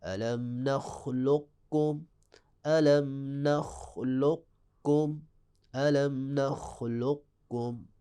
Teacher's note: تھوڑا سا قاف کو آپ نے موٹا پڑھنا ہے، تھوڑی سی خوشبو دینی ہے، اور پھر آپ نے کم پہ چلا جانا ہے۔ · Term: ادغام متقارب